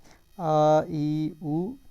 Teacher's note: जैसे हम यहाँ पर उच्चारण करते हैं आ, तो इसमें अ की तुलना में उसकी ठीक दुगना समय लग रहा है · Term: दीर्घ स्वर